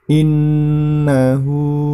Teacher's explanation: di situ terdapat nun tasydid, maka itu termasuk hukum bacaan gunnah, ditahan dan diperpanjang cara membacanya. Innahu, nah hu-nya itu dibaca panjang 2 harokat.